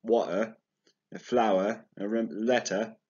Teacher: in british english they'd say something like water a flower a letter and remember you don't really pronounce the r